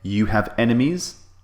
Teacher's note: notice the intonation of this question it's rising